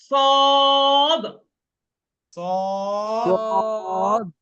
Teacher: সদ মোটা সদ বলে মুখটা গোলের মতো হয়ে আসে।